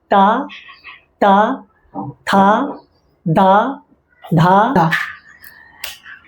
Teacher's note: ता थ जब बोल रहे हैं तो हमारी जुबान जो है दांत से टच होती है